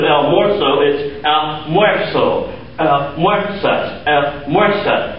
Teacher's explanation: the stem change occurs in the last vowel of the stem because that's where the emphasis goes, that's what causes it to crush down.